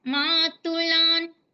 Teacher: మాతులాన్ లో కూడా మాకి దీర్ఘము, లాకి దీర్ఘము, పొల్లున.